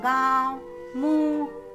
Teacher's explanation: अनुनासिक का उच्चारण नाक और गले दोनों से होता है